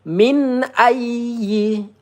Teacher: nun sukun bertemu alif izhar halqi. Kita baca dengan jelas ya tidak boleh didengungkan, dipanjangkan ya.